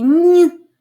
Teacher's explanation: нь приголосний м'який тому що його пом'якшує наступний звук і